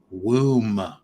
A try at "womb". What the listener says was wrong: It's not Woomba. Womb. Womb. Silent B. Womb.